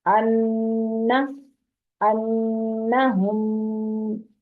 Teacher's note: क्योंकि मीम मुशद्दद पे भी गुन्ना होता है। नून मुशद्दद यानी तशदीद वाला नून और मीम मुशद्दद, इन दोनों पर गुन्ना होता है, नाक में आवाज जाती है।